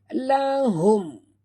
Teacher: Mim mati bertemu lam, izhar syafawi tanpa dengung.